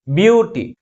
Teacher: the primary stress is on the first syllable